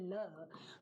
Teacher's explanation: पार्श्विक एक ही है, वो है ल